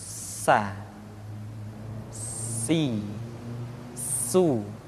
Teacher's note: Di antara sifat yang menonjol ketika kita mengucapkan huruf sa atau huruf sin adalah sifat as-safir, di mana ketika kita mengucapkan huruf sa ada suara tambahan yang menyerupai dengan suara belalang.